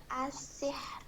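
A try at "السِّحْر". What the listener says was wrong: Hilang rohnya, asyih. Gitu. Coba sekali lagi.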